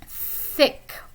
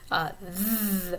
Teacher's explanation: these would be voiceless and voiced dental fricatives